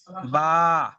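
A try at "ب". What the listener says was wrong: টান হচ্ছে না, এক আলিফ পরিমাণ হচ্ছে না। আপনি একটা আঙ্গুল এরকম সোজা করে বন্ধ করেন, স্বাভাবিকভাবে দেখেন।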